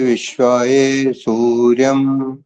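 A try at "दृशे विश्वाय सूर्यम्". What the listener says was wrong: जहां जहां पर अंतिम शब्द आ रहा हो तो य पूरा बोलना होता है उसको विश्वा नहीं करना होता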